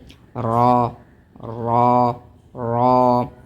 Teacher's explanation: जबान की जो नोक है उसको थोड़ा सा उल्टा करके ऊपर वाले तालू से लगाएंगे तो उससे हर्फ र अदा होता है लेकिन जबान को ज्यादा पलटा नहीं है इससे दो तीन र